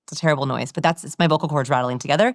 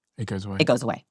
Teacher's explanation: Vocal fry happens from a lack of breath. What actually is happening is you're speaking and your vocal cords are rattling.